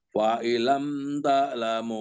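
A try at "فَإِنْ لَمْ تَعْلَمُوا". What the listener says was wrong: Ditekan lagi Pak. Fa illam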